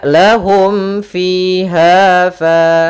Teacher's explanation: Kemudian yang ketiga, karena ketiga yaitu huruf fa, adanya alif setelah huruf fa, maka dinamakan dengan mad tabi'i. Sehingga panjangnya fiha fa itu harus sama sepanjang 2 harokat. Maka lahum fiha fa, tidak boleh dibedakan antara panjang yang satu dan panjang yang lainnya.